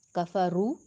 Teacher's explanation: رو کو پر پڑھیں گے، رو کے اوپر پیش ہے، وہ مدہ ہے، لمبا بھی کریں گے۔